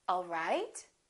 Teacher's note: The word right, the pitch would go up, all right.